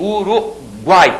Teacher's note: aqueles três sons vocálicos apareceram na mesma sílaba não posso dividir aquilo · a primeira vogal é sempre a semivogal a segunda que a que fica no meio é sempre a vogal e a terceira a vogalzinha lá no final é na realidade a semivogal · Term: tritongo